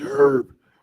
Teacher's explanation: British English herb, pronounced with the H, is standard.